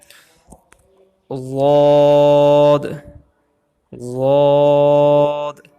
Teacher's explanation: ضاد جو ہے یہ زبان کا کنارہ جو ہے لیفٹ سائڈ سے یہ اوپر کی داڑھوں کو لگے گا تو ضاد ادا ہوگا